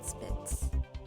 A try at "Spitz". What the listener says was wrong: We don't say Spitz like that. We say Spitz with a sh. That's like at least the German pronunciation.